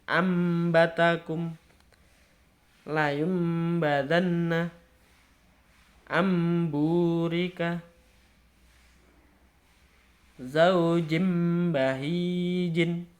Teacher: Jadi ingat, ketika ada huruf nun mati atau nun sukun atau tanwin, dia bertemu dengan huruf ba, maka membacanya itu mengganti mengganti nun atau tanwin di situ dengan huruf mim